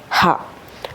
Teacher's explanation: the glottis open and there is no manipulation of the air passing out of the mouth is called ഗ്ലോട്ടൽ sound അതായത് ഹാ എന്ന് പറയുമ്പോൾ നമ്മുടെ തൊണ്ടയുടെ ഭാഗത്ത് എവിടെയോ ആണ് എന്ത് ചെയ്യുന്നത്